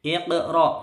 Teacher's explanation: Ya, perhatikan baik-baik. Iqra, ini qafnya mantul, ini qalqalahnya sughra, mantul kecil